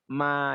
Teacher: Baina syafatain di antara dua bibir